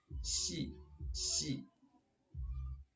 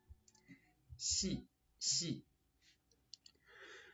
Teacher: Ближе всего в русском языке звук щи. Но мягкий, еще мягче, чем в нашем русском языке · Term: Шепелявая S